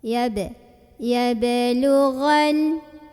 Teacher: Maka cara membunyikannya adalah dipantulkan dengan pantulan yang kecil ya. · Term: qalqalah sughra